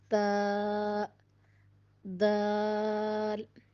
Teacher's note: زبان کی نوک اوپر کے 2 دانتوں کی جڑ سے لگے تو تا دال ادا ہوتے ہیں